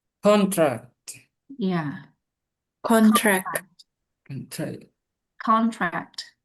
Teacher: Jadi cenderungnya dalam pelafalan bahasa Inggris ini, ketika kata tersebut masuk dalam kategori kelas kata nomina atau kata benda, maka stressnya itu occurs terjadi pada first syllable, suku kata pertama